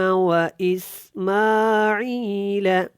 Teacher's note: یہاں پہ سین سختی کے ساتھ، یہاں پہ بھی سین سختی کے ساتھ، اور میم کے اوپر کھڑا زبر ہے، عین کو آپ نے لمبا کرنا ہے، میم کو بھی لمبا کر کے ادا کرنا ہے، اور کاف یہاں پہ موٹا ہے.